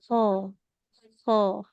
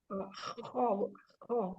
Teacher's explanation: Dia di tenggorokan paling atas. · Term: huruf kho